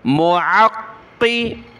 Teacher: क़ाफ के ऊपर तशदीद है, इसको हमें जमाना है और सख्ती के साथ पढ़ना है और मोटा करना है